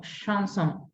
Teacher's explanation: en lugar de ser CH tan fuerte es más suave como si fuera SH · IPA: [ʃ]